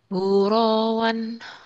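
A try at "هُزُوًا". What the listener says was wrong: Huzuan itu ada titiknya. Huzuan ya, bukan huroan. Huzuan.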